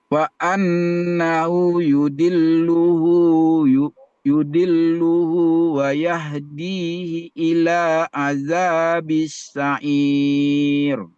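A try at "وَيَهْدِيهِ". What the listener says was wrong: Iji, i-nya dibaca pendek. Hati-hati. Ada yahdihi, fihi, i. Semua fihi di dalam Al-Quran itu dibaca pendek.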